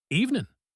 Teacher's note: Good evening became just evening. The G at the end is gone, and the good is gone.